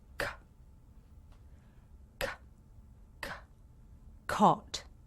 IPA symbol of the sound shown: k